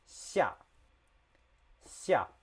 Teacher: the X sound is somewhere in between S and SH.